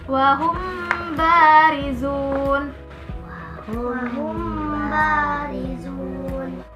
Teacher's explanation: hukum bacaan mim mati apabila bertemu dengan huruf ba dibaca samar-samar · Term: ifa syafawi